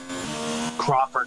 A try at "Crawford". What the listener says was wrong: Not Clawford, Crawford with an R.